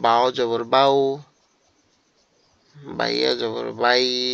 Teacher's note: লিনের হরফ হলে ডান দিকের উচ্চারণের সঙ্গে নরম করে তাড়াতাড়ি পড়তে হয়